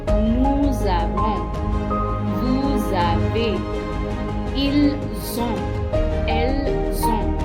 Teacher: And as you can see, there are some liaisons here with avoir, like nous avons. The S plus the A make the Z sound, because S followed by a vowel sound is always a Z sound. So it becomes nous avons, vous avez, ils ont, elles ont.